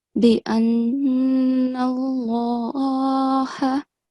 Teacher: The sound of lam has to be thick in this case because the preceding letter is carrying a fatha.